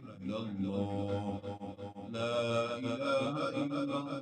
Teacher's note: اللہ موٹا کر کے پڑھیں سختی سے، چونکہ اس سے پہلے زبر ہے